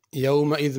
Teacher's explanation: یومئذ میں ذال صحیح ادا کرنی، زا نہیں پڑھنی